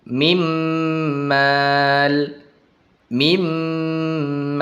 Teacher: Mimmal dimasukkan kemudian didengungkan.